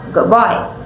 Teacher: the D sound in good may change slightly to sound more like a B, so it sounds like good boy. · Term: assimilation